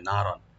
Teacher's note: নুনটাকে open করে রাখবেন। আর রন, রার উপর যে তানভিন আছে দুই জবর, এখানে আমরা একটু হালকা গুন্না করব